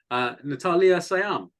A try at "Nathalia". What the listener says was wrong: Yeah, so I say Nathalia Syam, that's fine. With the H, I do pronounce it a bit more, but